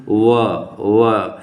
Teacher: तो ओठ के नीचे का हिस्सा आ रहा है और दांत के ऊपर का हिस्सा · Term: दंतोष्ठ ध्वनियाँ